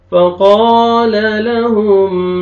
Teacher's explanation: قاف کو موٹا کر کے پڑھنا ہے اور کھینچنا ہے. ایک فتحہ الف سے پہلے فتحہ ہے, الف مدہ, ایک الف کے برابر آپ نے کھینچنا ہے.